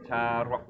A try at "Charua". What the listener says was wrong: Charua. It's not R. Rien. You know, rien. Charua.